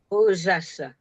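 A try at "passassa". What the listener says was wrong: Ah, and not the Z. Sassa. Remember, neither Sanskrit nor Pali has a Z sound.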